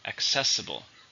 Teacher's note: It's an adjective. How many syllables? 4 stresses on the second.